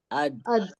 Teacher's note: जबान की नोक हमारी ऊपर की 2 दांतों की जड़ में लगी